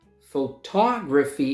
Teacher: Photography, and the second syllable is stressed